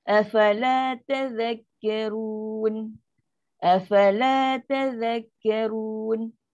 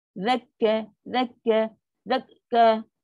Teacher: Masuk dengan lancar. Zal masuk terus pada kaf.